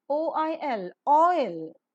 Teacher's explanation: just above the half close position the lips are rounded at first and later Loosely spread while the Glide is pronounced · at first and later Loosely spread while the Glide is pronounced the diphthong is rising closing and Wide Glide